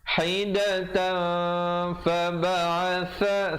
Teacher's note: tapi bila datang fa, sembunyikan bunyi tanwinnya di belakang fa, kadar panjang 2 harakat. Hidatan fa ba'atha, sa di hujung lidah. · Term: ikhfa